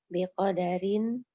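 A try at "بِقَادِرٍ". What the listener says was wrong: Biqadirin, bukan biqadarin.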